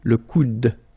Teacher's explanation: you don't insist on this final e, it only gives you the sound of d at the end.